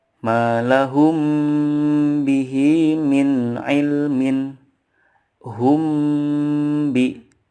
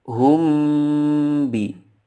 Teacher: Cara membacanya adalah dengan mendengungkan atau menambahkan gunnah yang dipanjangkan 2-3 harokat. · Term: Ikhfa syafawi